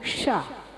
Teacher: षटकोण वाला शाह, जिसे मूर्धन्य शाह कहते हैं, उसको बोलने में हमारी जीभ यूं मूर्धा पर रगड़ कर आती है